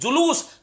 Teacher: तो लू पे जोर आ रहा है ना, तो दीर्घ हो जाएगा